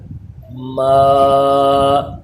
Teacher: میم کھڑا زبر ما، میم کی آواز ناک میں نہیں جانی چاہیے